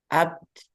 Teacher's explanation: Jadi setelah suaranya tertahan, di ujung itu ada udara yang keluar. Artinya dia terkumpul sifat syiddah dan hamas.